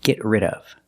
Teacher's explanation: The D in rid is a fast D.